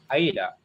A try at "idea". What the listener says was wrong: Idea. Perjelas A-nya di terakhir, bukan idea. Nah, A-nya harus jelas, gitu kan?